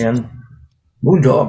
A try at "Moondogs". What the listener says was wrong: With an S on the end.